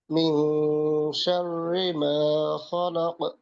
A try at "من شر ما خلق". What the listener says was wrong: শাওর না, শাররি, শাররি।